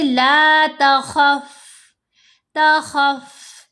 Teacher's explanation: فا کی آواز کو بہت لو کر دیں گے، بہت ہی دھیمی آواز میں اس کو ہم پڑھیں گے · آپ کے جو اوپر والے 2 سامنے کے دانت ہیں وہ نیچے والے ہونٹ کے باہر جو حصہ ہے نا، خشک حصہ، اس کے اوپر لگنے چاہیے